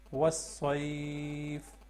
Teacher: اگر یہاں پہ ہم وقف کریں گے تو پھر لین کو لمبا کر کے پڑھتے ہیں. وَالصَّيْفِ ایسے. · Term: حروف لین